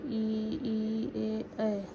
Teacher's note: जिन स्वरों के उच्चारण में जिह्वा का अग्रभाग ऊपर उठता है अग्रस्वर कहलाते हैं